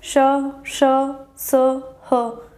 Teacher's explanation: ऊष्म व्यंजन को हम संघर्षी व्यंजन भी कह सकते हैं, संघर्ष, ठीक है, जिसमें वायु संघर्ष के साथ बाहर निकलती है